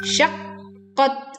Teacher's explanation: menekan huruf qaf karena huruf bertasydid sehingga kita menekannya, lalu kita membaca huruf qaf di ketukan keduanya, syaqqat. Nah, seperti itu.